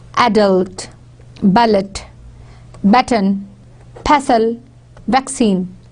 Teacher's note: The stress is on the first syllable. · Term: first syllable stresses